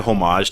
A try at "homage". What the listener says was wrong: don't pronounce the H.